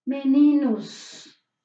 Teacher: Cuando esa O es suave, ¿sí?, la O tiene sonido de U en la variante de San Pablo